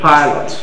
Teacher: the consonant, the voiceless bilabial plosive